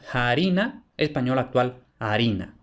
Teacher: la aspiración de la f especialmente al principio de la palabra que en el castellano medieval se aspira y posteriormente desaparece